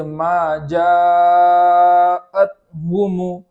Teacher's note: مد کرنے کے بعد اس بات کا خیال کریں گے کہ وہاں حمزہ کا جھٹکا صاف صاف ادا ہو